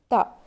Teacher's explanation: زبان کی نوک کو سامنے کے 2 دانتوں کے جڑ میں لگانے سے تا ادا ہوتا ہے. تا پر زبر ہے، نہیں کھینچیں گے.